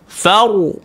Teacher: Bila mati ra, apa kena buat? Mulut kita perlu dibulatkan. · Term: tebal